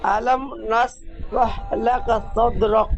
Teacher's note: সাকিন যুক্ত দালকে কলকলা করে পড়তে হবে